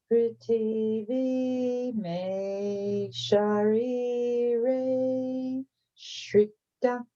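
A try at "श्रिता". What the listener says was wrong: That was so much better. Shrita, and here there's no H at the end of Shrita, so it's simply Shrita.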